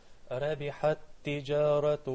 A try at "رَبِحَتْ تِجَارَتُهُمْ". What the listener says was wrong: And put a little heaviness on the ra because it's with the fatha. Ra. رَبِحَتْ. Not ra. Ra.